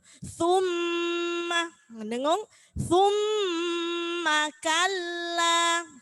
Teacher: Kalau ada mim dan non bertasydid maka dibaca gunnah, mendengung.